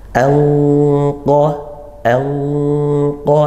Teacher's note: nun sukun bertemu qof hukumnya ikhfa Hakiki disamarkan ya Bunyi Nun tetap kemudian ke makhrajnya qof langsung seperti itu